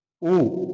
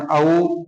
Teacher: जिन स्वरों का उच्चारण करते समय होठ गोल हो जाते हैं। कैसे हो जाते हैं? गोल हो जाते हैं। वे स्वर वृत्ताकार स्वर कहलाते हैं।